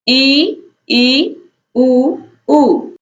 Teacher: संवृत्त का अर्थ है कम खुला हुआ। जिन स्वरों के उच्चारण में मुख कम खुले उन्हें हम संवृत्त स्वर कहते हैं